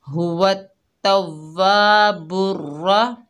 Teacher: बा के ऊपर पेश, आगे रा मुशद्ददा है, बा को रा से मिलाकर पढ़ेंगे और रा पुर पढ़ी जाएगी यानी मोटी पढ़ी जाएगी। बीच में अलिफ और लाम आ रहा है, लेकिन ये इनके ऊपर ज़बर ज़ेर पेश कुछ भी नहीं है तो इस इस्तेमाल में नहीं आएंगे।